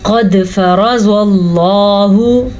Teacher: क़ाफ को भी पुर पढ़ा, दाल पे मैंने कलकला किया क्योंकि दाल हुरूफ़ कलकला में से है। रॉ को मैंने पुर पढ़ा क्योंकि रॉ पे ज़बर है।